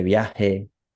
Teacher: usamos la H inglesa de house en esta zona del sur y por eso en América Latina pues se pronuncia como en la zona del sur de viaje, Ujú. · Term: El sonido de la J